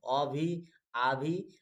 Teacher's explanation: और इसमें अ भी आ भी, ये दोनों अ भी आ भी आपका कंठ में ही आता है।